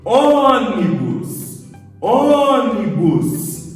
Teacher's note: não é a última nem a penúltima, é a antepenúltima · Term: proparoxítona